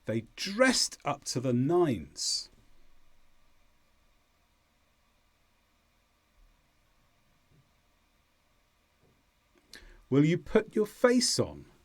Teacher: here the stress is more on face rather than put but there can be stress on put as well